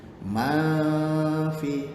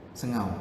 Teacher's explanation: Dengar bunyi dengung tu. Ma fi, nun mati bertemu fa. Sengau. Orang panggil ikhfa.